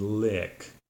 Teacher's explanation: your lips are more relaxed there are not so tense and this sound is also a high vowel sound but it's still a little lower so so your tongue doesn't go quite as high as in the e sound and the sides of your tongue touch upper back teeth so